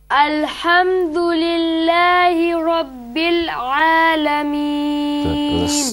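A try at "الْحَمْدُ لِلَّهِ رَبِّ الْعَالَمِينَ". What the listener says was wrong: There was a slight bounce in Rabbil Alameen.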